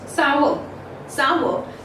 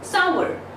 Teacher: So in British English, the pronunciation goes sour, sour. This R in British English is silent, whereas if we talk about the American English, then R becomes a little prominent in the American English, and it is pronounced as sour.